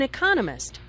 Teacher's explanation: Notice the stress on economist. This content word has new information, so it is emphasized.